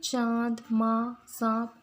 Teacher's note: अनुनासिक का उच्चारण नाक तथा मुंह से किया जाता है। इसकी ध्वनि नाक के पीछे से आती हुई प्रतीत होती है, जैसे चांद, माँ, सांप आदि।